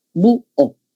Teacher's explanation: Vocal cerrada más vocal abierta, pero mayor fuerza la cerrada y con tilde obligatorio. · Sabemos que bu es una palabra grave que termina en vocal, pero por ser hiato acentual se le coloca la tilde. Acá hemos separado no porque esté H, sino porque tiene más fuerza la vocal cerrada.